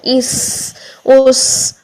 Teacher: سین، زا اور صاد تینوں میں آواز جاری رہے گی، لیکن سین اور صاد میں سانس جاری ہوگا، زا میں سانس جاری نہیں ہوگا. · آواز بھی جاری ہے، سانس بھی جاری ہے، اس اس، اور سیٹی آنا بھی ضروری ہے. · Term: ہمس, صفیر